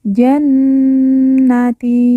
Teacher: Nun yang bertasdid langsung kita tekan, kita tahan 2 harokat dan didengungkan